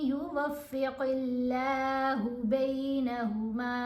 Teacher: قاف کو موٹا پڑھنا ہے لیکن یہاں آگے لام کو باریک پڑھا جائے گا